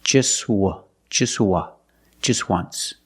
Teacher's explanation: phonetically the t is between consonants so it's silent link the sounds just just just once there's no T just